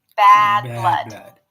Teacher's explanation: Here we have the as in cat forward front vowel.